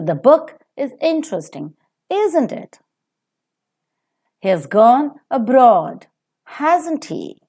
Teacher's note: the falling tone is given to the question tags which normally expect the listener to agree with the speaker